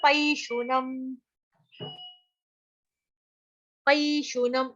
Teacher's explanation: ए की मात्रा जो है उसको पई पढ़ेंगे, प प्लस आई की मात्रा, पैशुनम।